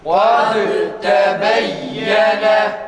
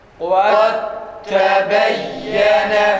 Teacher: Demek ki bizim Kur'an-ı Kerim okurken cezimli dalden sonra ta harfi geldi mi böyle okumamız gerekir. Yani kalkale yapmıyoruz. Dalden hiç eser kalmıyor. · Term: kalkalesiz idgamlı